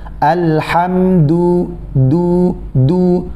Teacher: Pertemukan ujung lidah antum dengan pangkal gigi seri bagian atas. · Kemudian huruf dal juga tipis, jangan ditebalkan.